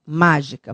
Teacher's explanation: a antepenúltima sílaba é tônica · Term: proparoxítona